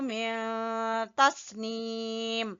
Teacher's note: یہاں اخفا ہو رہا ہے نون ساکن کے بعد تا